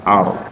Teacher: Fil ardi, arnya itu rotafkhin ya, rotafkhin kalau sudah belajar. Jadi kalau ada ro sukun sebelumnya berfathah ini tebal ar.